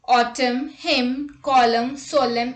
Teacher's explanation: Rule. N is not pronounced when it comes after M at the end of a word. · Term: silent N